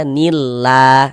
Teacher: Dibaca tipis. Huruf lam yang di tengah nih, huruf lam jalalahnya tuh kita baca tipis, kita baca tarkik. Sehingganya kita baca nillah.